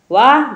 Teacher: दांत और ओष्ठ दोनों से बोला जाता है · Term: दंतोष्ठ